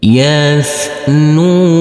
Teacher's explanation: huruf nun kita baca panjang dengan panjang dua harakat